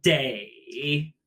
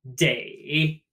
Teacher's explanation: Think the English word day like today with a dipping tone.